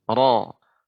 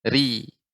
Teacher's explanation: untuk ro yang berharokat fathah dan dhammah, ya lidahnya dinaikkan. Ro. Namun untuk ro yang kasroh, ya berharokat kasroh tipis. Ri. Ya, tidak naik.